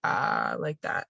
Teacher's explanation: i have vocal fry which you can probably hear on this recording especially when i speak very relaxed